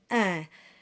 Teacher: The first combination we have is I and N, and that's un. And that starts with an E sound and it's nasalized into un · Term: nasalized vowels